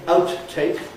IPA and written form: ˋaʊt(released)teɪk (outtake)